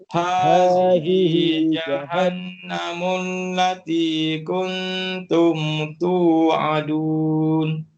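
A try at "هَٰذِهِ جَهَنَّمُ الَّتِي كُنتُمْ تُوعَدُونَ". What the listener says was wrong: Okay, tengok balik jahannam tu. Nun sabdu kan. Itu dipanggil wajibul guna. Dengungkan dia. Hazihi tekankan suara. Hazihi jahan wajibul guna. Dengung Hazihi jahannamul lati kuntum tu'adun. Jangan tu'adun Dua harkat. Tu'adun. Jangan tu'adun. Tu'adun.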